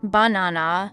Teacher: in the word banana we stress the second syllable